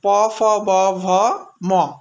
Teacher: দুটি ঠোঁট বন্ধ করে ভিতরের শ্বাসবায়ুকে আটকে রাখার পর ঠোঁট দুটি সামান্য খুলে যে ধ্বনি উচ্চারণ করা হয় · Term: ওষ্ঠ ব্যঞ্জন ধ্বনি